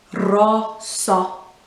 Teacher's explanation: the O at the end needs to have a short sound but with your mouth still open at the end